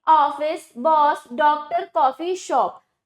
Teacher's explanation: हिंदी में इनके उच्चारण में आने वाले स्वर ना तो हिंदी का ओ स्वर है और ना ही औ। ठीक, इसके लिए नया वर्ण ओ और ओ, आ और ओ के बीच का, देखो आ और ओ के बीच का जो वर्ण है ये ले लिया गया है। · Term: आगत स्वर